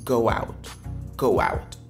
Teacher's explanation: Vous voyez une sorte de W, si je peux m'exprimer ainsi, qui vient se mettre dedans. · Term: liaison